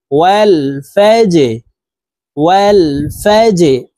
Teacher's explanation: ওয়াও লাম জবর ওয়াল, ফা জিম জবর ফাজে, জিম কলকলার হরফ নিচের দিকে ধাবিত করে ধাক্কা দিয়ে উচ্চারণ করতে হবে।